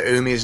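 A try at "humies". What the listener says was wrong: It's you, not ew.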